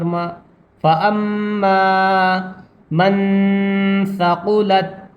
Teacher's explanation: الف مدہ کو ایک الف کے برابر کھینچا جاتا ہے اس لیے اس کو بھی کھینچ کر پڑھیں گے، میم الف